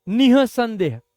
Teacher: વિસર્ગ જે છે એનું ઉચ્ચારણ જોવું હોય તો એ હ જે ઉચ્ચારણ લે